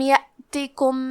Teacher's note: الف پہ جزم ہے تو ہم حمزہ کو ظاہر کریں گے اور حمزہ کی ادائیگی حلق کے نیچے والی حصے سے ہے